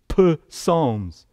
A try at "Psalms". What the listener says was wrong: Well, it would seem that that's the way that it is, but that's not really how you pronounce it. You just say Psalms. You don't pronounce the P.